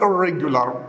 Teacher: when you say irregular, you feel that the tip of your tongue goes back a little and touches the beginning of the hard palate